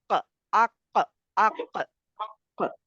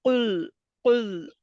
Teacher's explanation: काफ जो है नरम तालु से अदा होता है, नरम तालु से जाके जुबान हाँ लगती है, ठीक है।